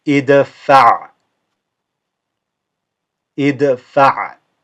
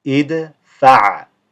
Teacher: this is qalqala, or bounce on the dal.